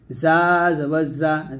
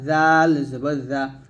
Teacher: জিহ্বাটা নিচে দাঁতে লাগবেন, জাল জিহ্বাটা উপরের দাঁতের আগে লাগবেন